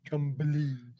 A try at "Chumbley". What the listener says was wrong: Like it with the B, Chumbley. Chumbley.